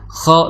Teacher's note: Khalaqatu, ya di situ kha ya, makhraj kha ya. Itu di tenggorokan paling atas atau di belakang lidah, dinding belakang lidah ya